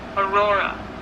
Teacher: you do want to stress on the middle syllable